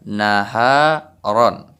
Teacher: Jadi ra ini kita baca tebal karena baris di atasnya yaitu baris tanwin ataupun baris dua.